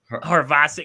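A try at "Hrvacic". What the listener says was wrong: Ravasic. Then the H is silent.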